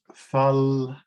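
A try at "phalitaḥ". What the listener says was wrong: No. This is not fal. This is pal.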